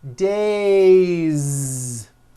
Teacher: It's not days unvoiced. It's days with a voiced Z ending.